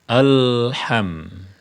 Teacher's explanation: ketika kita menyebutkan huruf lam ujung lidah kita menyentuh gusi atas